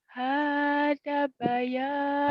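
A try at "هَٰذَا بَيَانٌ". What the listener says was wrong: hada panjang itu hada panjang. Itu bisa, tapi terlalu memaksakan ya. Terlalu memaksakan, tenang Bayanun.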